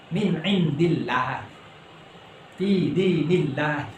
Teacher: Kemudian tatkala lafal Allah itu diikuti dengan ada kasroh, ya ada sebelumnya itu kasroh, ada bacaan sebelumnya itu kasroh, maka dibaca tipis. Min indillah, fi dinillah, ya, tidak boleh fi dinillah, harus dibaca tipis, ya.